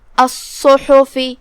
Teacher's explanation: کلمت الصحف میں یہاں صاد پہ تشدید ہے، دو حرف کے برابر ہم صاد کو پڑھیں گے اور اسے بھاری آواز میں بھی کیونکہ صاد حروف تفخیم میں سے ہے.